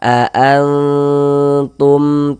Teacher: suaranya itu di bagian an-nya itu kita tahan sebentar ya. Kita tahan sebentar kita gunahkan, kita dengungkan sepanjang dua harakat. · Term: ikhfa